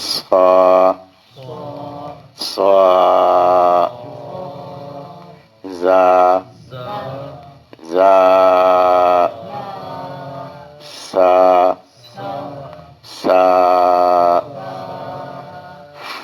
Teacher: زبان کی نوک اور نچلے دانتوں کا کنارہ اس سے تین حرف ادا ہو رہے ہیں